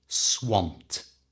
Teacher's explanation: any English word that ends in d has three possible ways of pronouncing that ending in this case it's a simple T